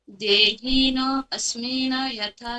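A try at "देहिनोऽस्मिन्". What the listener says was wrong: अस्मि न नहीं है, अस्मिन न नहीं है, अस्मिन न के नीचे मात्रा है तो वहां पर फुल स्टॉप जैसा है, तो देहिनो अस्मिन।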